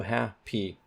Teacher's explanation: happy, the primary stress is on hap